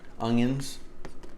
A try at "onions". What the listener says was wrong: Oh, and it doesn't have a G in it. So try it again. He says it Ungions. Onions.